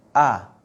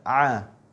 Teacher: perbedaan antara huruf hamzah dan ain. A dan A. Nah, itu tenggorokan ya. Huruf ain tuh ditekan.